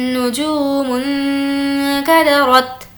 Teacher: नून साकिन की आवाज़ को नाक में छुपाया जाता है। यहाँ पर काफ है और काफ हुर्फ इख्फा के 15 लेटर्स में से है।